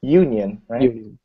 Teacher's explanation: That's not a vowel sound at the beginning. It's a y.